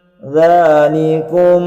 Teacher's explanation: jika ada mim sukun bertemu dengan mbak ini dihukumi Ikhfa Syafawi artinya dibaca samar lah ya samar dan berdengung dzanikum ya jadi suara em nyam ditahan sepanjang eee 2 harokat